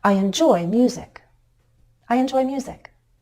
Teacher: When we have two or more syllables to work with, as in music, our voice can step down. It's a bit easier to change our pitch.